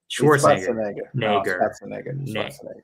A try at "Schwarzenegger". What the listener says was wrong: That's Schwartz. You think the Austrians say Schwartz? They don't say Schwartz. It's Schwarzenegger. It's Schwarzenegger.